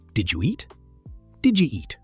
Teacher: Did you becomes did ya.